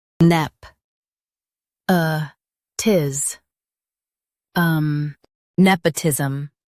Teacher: Stress nep and keep uh tis um smooth.